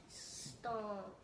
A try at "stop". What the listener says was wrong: Now this was stomp, but this is just stop.